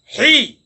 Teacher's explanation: দ্বিতীয় মাকরাজটি হলকের মধ্যখান থেকে যেটি হেই, এটি গলার মধ্যখান থেকে হেই